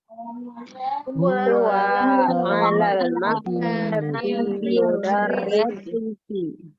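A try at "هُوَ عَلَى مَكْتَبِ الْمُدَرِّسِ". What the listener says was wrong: Ala maktabi, bukan alal ya. Huwa 'ala maktabil mudarrisi.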